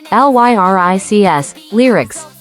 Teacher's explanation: Divide it into ly-r-ics. The first syllable has a long I sound, while the second syllable has a short I sound.